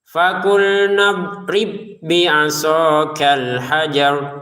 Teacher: ada ba sukun bertemu dengan ba, maka ba pertama masukin ba ke yang kedua sehingga pantulannya hilang